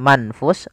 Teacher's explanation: Izhar berarti suara nunnya jelas, misalnya manfus, n-nya jelas.